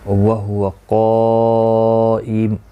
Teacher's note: وَهُوَ قائم، یہاں پر بھی حروف مستعلیہ کا قاف ہے، الف بھی پر، دونوں پر پڑھے جائیں گے اور مد متصل بھی ہے، 4 الف کی مقدار کے برابر کھینچ کر پڑھیں گے.